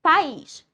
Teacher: Viram que ela é oxítona porque a sílaba mais forte é a última.